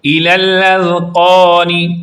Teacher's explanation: یہاں پر ذال کو آپ درست پڑھیں گے، زبان کو اٹھائیں گے اور اوپر والے دانتوں کے اندرونی کنارے سے لگائیں گے، اور قوف دو نقطہ والا ہے اس لیے اس کو پوری یعنی موٹی آواز میں پڑھیں گے۔